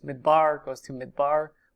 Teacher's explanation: midbar goes to midbar long a to short a